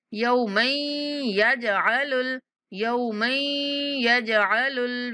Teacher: यौमन यौमन यहाँ पर इदगाम करेंगे, यानी मीम को या के साथ मिलाते हुए आपने गुन्ना के साथ अदा करना है और जीम पर कलकला करना है, मतलब कि जीम को थोड़ा सा हिला कर पढ़ना है।